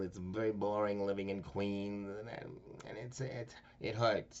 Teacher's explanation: it comes out in kind of a droning through the nose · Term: nasal